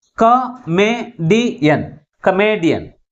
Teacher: third syllable from the last is pronounced with a greater force comparing with other syllables. And also this word ends with IAN suffix. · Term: primary stress